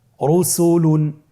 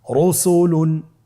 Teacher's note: রয়ের উপরে পেশ এসেছে, তাহলে র হরফটিকে মোটা করে পড়তে হবে